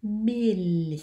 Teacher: When my tongue comes down, it arches into E, even though we never actually say E. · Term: ich-laut